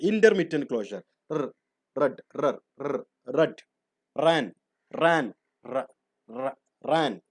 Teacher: Passive ആർട്ടിക്കുലേറ്ററിന്റെ ഇടയിലൂടെ ഇങ്ങനെ ഇടയ്ക്കിടയ്ക്ക് ഇങ്ങനെ ടച്ച് ചെയ്ത് നിൽക്കുമ്പോൾ അതിന്റെ ഇടയിലൂടെ in between active and passive articulators the air escapes intermittently. എയർ ഇങ്ങനെ കുറച്ചീച്ച് അങ്ങനെ പുറത്തു പോകും. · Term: Intermittent closure